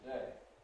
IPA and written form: təˈdeɪ (today)